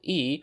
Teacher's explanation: the high front vowel /i/